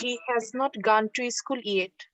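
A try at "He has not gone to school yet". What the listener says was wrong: নো নো নো, গান না, বারবার গান বলতেছো কেন তোমরা? এটাকে গন, হি হ্যাজ নট গন টু স্কুল ইয়েট।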